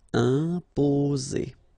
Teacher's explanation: only one S between the two vowels, so it's the sound Z